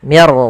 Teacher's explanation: tidak boleh mirro tapi langsung saja Mir hati-hati di dalam laf ro itu punya sifat namanya sifat takrir tapi takrirnya hanya satu saja tidak boleh berulang